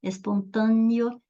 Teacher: Aqui eu tenho a semivogal E mais vogal A, porque essa semivogal E soa como se fosse I, espontâneo.